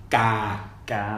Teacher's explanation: So it's not a G. It's non-aspirated K.